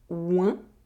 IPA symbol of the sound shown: wε̃